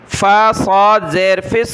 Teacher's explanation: فا کو صاد کے ساتھ ملانا ہے، صاد کو موٹا پڑھنا ہے۔ فا صاد زیر فس، صاد واو پیش سو، را زیر ری۔